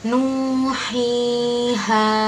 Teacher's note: hukum bacaan panjang yang dibaca panjang biasa, yaitu 1 alif atau 2 harokat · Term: mad tabi'i